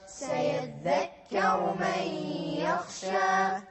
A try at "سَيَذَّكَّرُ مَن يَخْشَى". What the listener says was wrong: لا تسرعون في الغنة. سيذكر من يخشى.